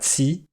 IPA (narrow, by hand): t͡si